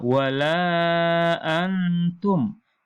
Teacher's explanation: Di sini ada non mati ketemu dengan ta. Ini hukum bacaan adalah ikhfa, maka dibaca dengan dengung.